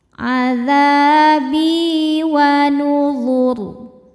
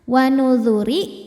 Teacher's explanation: Huruf ra ketika berhenti disukunkan dibaca secara tafkhim, sebab sebelum ra yang disukunkan ada harokat dhammah, maka ra-nya tebal. Wa nuzur. Beda halnya ketika disambung atau diwasol dengan ayat 17.